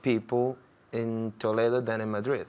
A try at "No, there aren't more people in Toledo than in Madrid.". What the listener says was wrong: Muy bien, pero hay que sacar la lengua más con la TH. Than. So there.